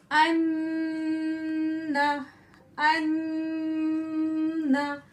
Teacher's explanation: नून के मखरज पे जाएंगे और आवाज को अपनी कहाँ ले जाएंगे? हम नाक की जड़ में ले जाएंगे। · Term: गुन्ना